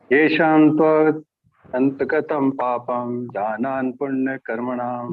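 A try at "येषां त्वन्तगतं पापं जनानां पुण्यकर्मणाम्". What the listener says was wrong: Jananam is there or what?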